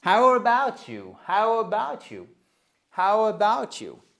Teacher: Comme c'est une question à laquelle on ne peut pas répondre par yes ou par. On descend l'intonation sur la fin.